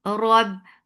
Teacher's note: The sound is short. Rob, ra is heavy for fatha open jaws attached with ba. Ba will cut off the makhraj abruptly.